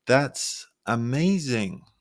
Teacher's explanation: Stretching that and amazing to show excitement. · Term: held pitch